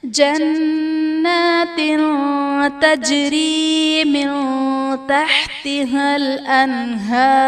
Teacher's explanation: من تحتها میں نون ساکن کے بعد حروف اخفا میں سے تا ہے تو یہاں پر اخفا کا قاعدہ ہوگا، یعنی نون ساکن میں ہم غنہ کر کے پڑھیں گے. انہار میں نون ساکن کے بعد حروف حلقی میں سے ہا ہے تو یہاں پر اظہار کا قاعدہ ہوگا، یعنی نون ساکن میں ہم غنہ نہیں کریں گے.